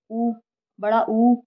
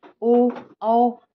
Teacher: जब आप न चारों को बोलेंगे तो जो आपका मुंह है जो आपके ओठ है वो गोल हो जाते हैं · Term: वर्तुल